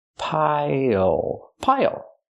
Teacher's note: Use the dark L at the end. It changes the vowel.